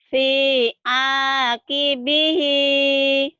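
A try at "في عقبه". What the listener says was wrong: ibu yakin ini panjang? Iya pendek.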